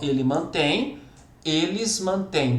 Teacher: A sílaba tônica é a última, então as duas são oxítonas.